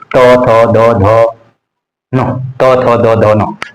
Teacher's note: जीभ का अगला भाग हमारे आगे वाले दांत को टच करती है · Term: दंत्य